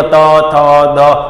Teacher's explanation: પછી બોલો ત થ દ, સાહેબ જીભ ક્યાં અડે છે? સીધી દાંતને અડે છે એટલે દંત્ય થઈ જશે